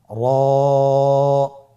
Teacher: র এবং জা। র হরফটি এখানে আমরা পোর করে উচ্চারণ করব, মোটা করে উচ্চারণ করব, এবং র হরফটি এক আলিফ টেনে পড়ব।